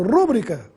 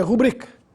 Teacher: A palavra é rubrica, tem a sílaba tônica na sílaba bri, portanto é uma paroxítona aí, sem acento gráfico.